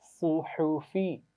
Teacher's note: ہا کو موٹا نہیں پڑھنا، فا کو بھی موٹا نہیں پڑھنا، صرف صاد موٹا پڑھا جائے گا